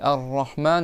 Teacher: C'est pas dit Arrahman avec la gorge rahman ça ressemble non c'est rahman avec le bout de la langue et il faut que le bout de la langue il touche derrière les dents du haut